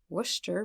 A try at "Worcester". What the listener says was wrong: It's Worcester. There's no H, but very close. Like Worcestershire sauce.